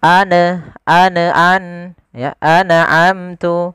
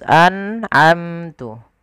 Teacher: ada bacaan izhar halqi, yaitu nun sukun bertemu dengan ain. Harus jelas an'amtu. Mim matinya di sini sebenarnya ada izhar syafawi, harus jelas juga.